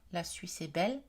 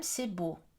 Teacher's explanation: l'intonation descendante où la mélodie descend marque la fin d'un énoncé déclaratif